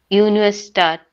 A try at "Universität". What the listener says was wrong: No, again you are saying A. It's not A. It's either like how do you say air? Just say air without the R.